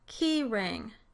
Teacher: words like keyring, where the r consonant is in the onset of the next syllable